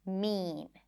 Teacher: even though mean is not high in pitch it's still stressed because it's emphasized it's longer more volume